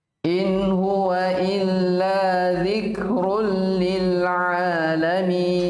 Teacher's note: Zikrun, dhammatain bertemu dengan lam. Semuanya hilang dari sifat dan hurufnya.